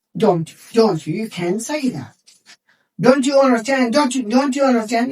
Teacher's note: For flow, we will introduce the ch sound and it will become don't you. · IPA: /tʃ/